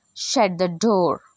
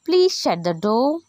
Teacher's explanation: కమాండ్లో falling tone కనిపిస్తుంది, రిక్వెస్ట్లో raising tone కనిపిస్తుంది.